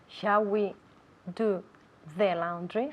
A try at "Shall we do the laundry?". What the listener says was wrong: Shall we do the laundry? I want to see more of your tongue. Do the laundry.